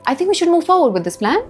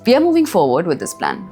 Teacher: That's down-talk. Falling intonation. Your voice lands on statements. [music] It doesn't float off into the air waiting for someone to validate it.